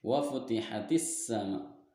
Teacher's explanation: Karena huruf alif lam bertemu dengan huruf sin. Huruf sin maka dibacanya idgham masuk ke dalam huruf sin. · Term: alif lam samsiyah